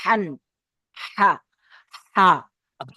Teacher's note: গলার ভিতরতে একদম গলার মাঝখান থেকে হা উচ্চারণ হবে, হান। হা।